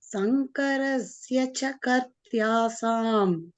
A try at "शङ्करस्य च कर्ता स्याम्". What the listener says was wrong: Karta syam, not kartya sam. Ya is for the sya. Karta syam.